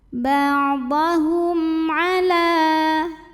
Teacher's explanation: Berikutnya ada hukum izhar syafawi karena mim sukun menghadapi huruf selain mim dan ba, yaitu ain. Maka mim sukun kita bunyikan dengan izhar, jelas